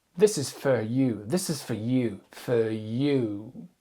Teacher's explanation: Donc le for va se transformer en fe. · Donc ici, on a un mot qui normalement se prononce for et qui va devenir sous-accentué, il va se rapetisser et se transformer en feu. Feu. Avec le son qu'on appelle schwa.